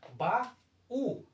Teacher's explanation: Mas quando eu faço a separação silábica e faço a pronúncia, ba-u, observe que a letra U ela passa a ganhar mais força, mais intensidade, ela passa a ser a sílaba tônica e também passa a ser acentuada. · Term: hiato